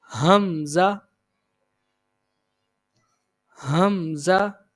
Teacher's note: next حمزہ، حمزہ اس کو بغیر کھینچے اور بغیر جھٹکا دیے نرمی سے پڑھتے ہیں، اور اس کی جو ادائیگی ہے یہ بھی ہا کی طرح ہے، یہ بھی حلق کے سب سے نچلے حصے سے ادا کیا جاتا ہے